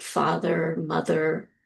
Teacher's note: And the one next to it is called the schwar. The R on the end is to represent that it is rhoticized, which means it is what we call R colored. Um, this is a vowel where you'll hear in words like father, mother.